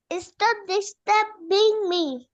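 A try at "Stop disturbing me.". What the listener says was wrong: স্টপ ডিস্টার্বিং। একসাথে উচ্চারণ হবে, ডিস্টার্বিং মি।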